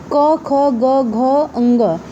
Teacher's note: जब बोलेंगे तो देखिए आपके गले में एक कंपन होगा, कंठ से निकलेगी आवाज़, ठीक है।